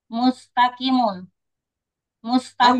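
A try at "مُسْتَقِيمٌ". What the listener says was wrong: Panjang. Jangan berubah-ubah. Jangan berubah-ubah.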